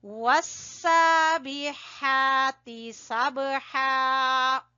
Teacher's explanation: با کے اوپر ہلکا کلکلا کریں گے اور کھڑی زبر کو کھینچیں گے